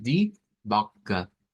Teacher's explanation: cambiamos el sonido de una W por una V, tenemos esa O corta